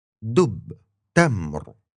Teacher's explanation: Then came d and t, as in dub and tamr. These two sounds are really similar to English's D and T, but the tongue is a bit further forward. It's touching your upper teeth.